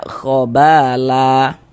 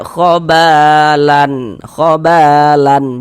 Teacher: Kemudian ini kalau kita berwakaf berhenti di huruf lam kita baca khobala ya la kita baca la. Kita panjangkan dengan panjang dua harakat. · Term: mad iwad